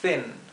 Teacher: Es una I corta y más cerrada, más apagada.